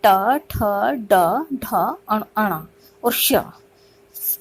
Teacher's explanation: तीसरा है मूर्धन्य। मूर्धन्य व्यंजन वे व्यंजन हैं जिनके उच्चारण में या जिनके बोलने में जो हमारी जीभ है मूर्धा को स्पर्श करती है।